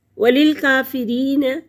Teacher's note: کاف کھڑی زبر ہے اور 1 الف کے برابر کھینچ کر پڑھیں گے